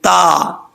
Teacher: زبان کی نوک اوپر والے دانتوں کی جڑوں سے لگے تو تا پڑھا جاتا ہے